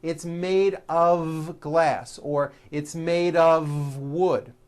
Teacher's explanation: it's not off wood with an unvoiced f it's all voiced and it's all connected